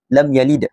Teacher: mim tersebut dibaca dengan jelas. tanpa dengung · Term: izhar syafawi